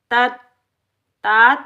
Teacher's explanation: ہم پڑھیں گے تت، تا ادا کریں گے، توا موٹا کر کے ادا نہیں کریں گے۔